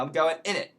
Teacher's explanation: instead of isn't it we just say in it